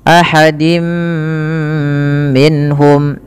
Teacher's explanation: Kemudian ahadim minhum, pada lafal dim minhum yaitu tanwinnya dimasukkan ke huruf mim dan ditahan. Dan inilah yang kita kenal dengan bacaan idgham bi gunnah, yaitu idghamnya memasukkan surat tanwin kepada mim dan ditahan, diganti bunyinya menjadi bunyi mim.